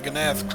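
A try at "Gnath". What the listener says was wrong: I think the G is silent? I'm not sure.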